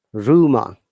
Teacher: We are pronouncing R at the beginning, but the last R is silent because of the short sound and because of the lazy sound, which we shouldn't pronounce, or it should be replaced by the vowel sound.